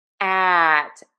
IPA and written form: æt (AT)